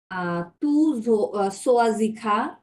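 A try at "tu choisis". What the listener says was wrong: সো না, এটা শো, আর একটু হার্ড সাউন্ড, হ্যাঁ, একটু চাপ দিয়ে বলেন।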